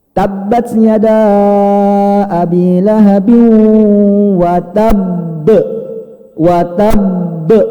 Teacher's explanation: Karena ba-nya itu bertasydid. Jadi ditahan dulu baru dipantulkan. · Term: besar